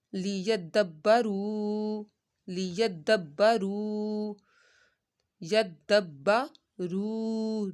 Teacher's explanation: रू को हमने एक अलिफ के बराबर खींचना है क्योंकि यहाँ पर वाव मद्दा हो रहा है।